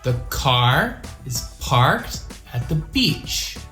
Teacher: that have more meaning in the sentence so in this sentence the words that should be stressed are car parked beach